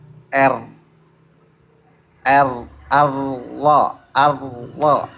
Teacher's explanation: Jadi getarannya nggak ada karena lidahnya nempel. Kalau nggak nempel bergetar dia.